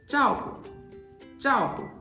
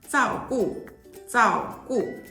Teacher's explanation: For initial sounds, retroflex sounds tend to merge with their alveolar counterparts in Taiwan. For example, ZH is usually pronounced Z.